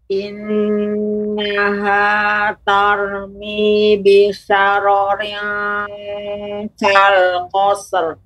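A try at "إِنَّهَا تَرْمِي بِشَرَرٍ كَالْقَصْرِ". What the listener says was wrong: Agak lebih lambat Ibu, tidak langsung memantulkan shad, kal qasr.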